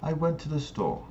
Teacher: the pitch of a voice drops off and lowers towards the end of the sentence indicates that we finish our thought and statement and that there's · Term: lower pitch